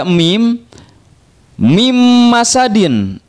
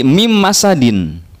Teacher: nun sukun bertemu dengan mim langsung dilebur ke huruf mim bunyi itunya hilang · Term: Idgham Bighunnah